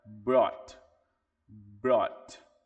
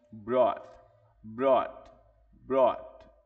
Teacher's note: É como se existisse simplesmente o BRO e pulasse diretamente para o T. E o T também fica bem suave.